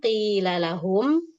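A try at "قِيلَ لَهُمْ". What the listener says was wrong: Ahsan, tapi kasrohnya harus sempurna. Jadi jangan sampai kita lupa. Qilalahum. Sambil diturunin aja lidah, ujung lidah depan. Qila. Jangan naik-naik ujung lidahnya.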